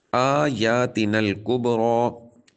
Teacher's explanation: آیاتنا الکبریٰ، با حروف کلکلہ میں سے ساکن ہے، کلکلہ خوب ظاہر کریں گے، اور را کے اوپر کھڑا زبر آنے کی وجہ سے را کو پر یعنی موٹا پڑھا جائے گا